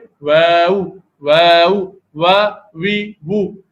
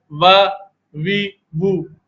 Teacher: واو جو ہے ہونٹوں کی گولائی سے ادا ہوتا ہے